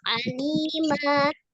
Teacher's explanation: Contohnya di kalimat aliman, nah ini kan double ya, aliman, tapi kalau kita wakof di akhir kalimat maka dibacanya alima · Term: mat iwat